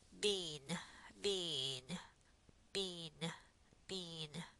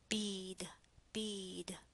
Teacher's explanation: right before nasal sounds the vowels become nasalized but not if the sounds are not nasal sounds so look · there's nothing going on there because the air is not going through your nasal cavity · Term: nasalization